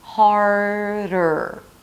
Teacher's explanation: the tongue needs to be touching the upper palate really lightly for that D sound, because it's not harder, it's harder. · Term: flap T